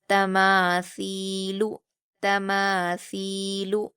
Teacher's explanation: तमासीु इसमें भी आप ध्यान देंगे कि लाम जो लास्ट का हर्फ है लाम उस पर हरकत लगी है इसलिए लास्ट में हम खींचेंगे नहीं बल्कि जल्दी पढ़ेंगे